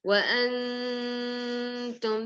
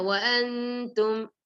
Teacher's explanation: You can see ta, the letter ta is also. So you have to do gunna and you have to hide the noon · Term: ikhfa